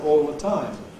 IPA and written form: ˈɔːl lə ˈtaɪm (all the time)